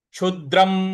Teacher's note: क्षु के बाद जो द है इस पर हमको हल्का सा बल लगाना है, आघात देना है।